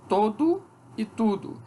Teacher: Em contexto tônico, o O cria oposição distintiva com o U.